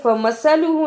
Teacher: فمثلہ، اسے فمثلہ نہیں پڑھنا، سا کی جگہ پہ سین کی آواز نہیں آنی چاہیے